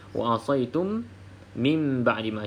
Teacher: bacaan Ikhfa Syafawi dengan iqlab ha jadi saya akan jawab sama kalau pilih pendapat iqlab tu kita baca dengan bibir atas bibir bawah rapat dirapatkan